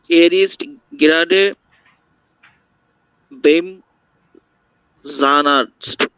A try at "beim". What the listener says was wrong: বেইম না, বাইম, না? বাইম।